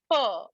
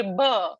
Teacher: But per and bh are from almost the same space. When you say per and you say bh, your lips are touching each other.